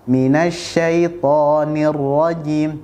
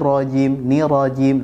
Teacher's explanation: pastikan ra tersebut dibaca double atau dibaca dengan syiddah. Jangan sampai kita membacanya minasyaitonir rajim, nirajim.